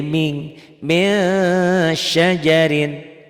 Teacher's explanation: Kalau ikhfa n-nya bunyi n-nya tambah g, cuma ditahan. Min jadi ming, masyajarin.